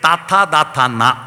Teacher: നാവിന്റെ അറ്റം പല്ലുമ്മത്തൊട്ടിൽ ദന്തത്തിൽ തൊട്ട് വ്യഞ്ജിപ്പിക്കുന്ന ദന്ത്യം